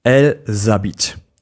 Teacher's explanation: the liaison gives us that helpful Z sound.